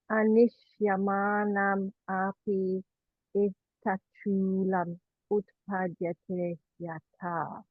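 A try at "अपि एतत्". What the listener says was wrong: Now, that was exactly right for the light a and the heavy nishya. You were slightly thrown by the sandhi there, because without sandhi, it's api etat, 4 syllables. Api etat. With sandhi, that e becomes a ya, it now becomes a 3-syllable utterance, api etat. But because now, if the api on its own is short plus short, api. With sandhi, the e has become a y. It now counts as a consonant.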